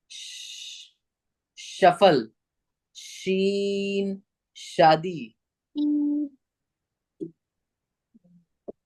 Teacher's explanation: इसमें जो टंग है ना, टंग, जबान जो है दांतों में नहीं लगानी है, जबान का बीच का हिस्सा ऊपर लगाना है, अंदर की तरफ ऊपर